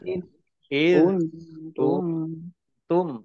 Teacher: Iz kuntum ya dal sukun jangan dikolkolahkan, jangan dipantulkan. Iz kuntum nun sukun bertemu dengan huruf ta bacaan ikhfa, baca samar-samar